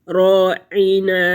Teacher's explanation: راعین، را پر پڑا جائے گا، عین حروف ہلکی ہے، وسط حلق سے ادا ہوگا۔ نون، نون جو ہے اس کی آواز کو ناک میں نہیں لے کے جائیں گے